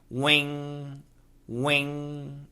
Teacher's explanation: behind the upper teeth wi wi wing wing w iing g the touching is in the back of the mouth not the tip of the tongue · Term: the NG